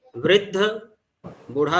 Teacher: वृद्ध बूढ़ा शब्द या बुढ़वा शब्द जो है वो री का उ हो गया है।